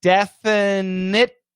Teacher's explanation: So it's definitely. So that frontal stop T and then a dark L are the same position. There is a transition, and that transition allows us to stop.